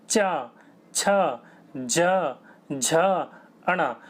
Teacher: जीभ टकराए गी बोल के देखिए च छ ज झ अण तो जीभ जब आगे वाले हिस्से से टकराए गी उसको क्या कहा जाता है तलव्य कहा जाता है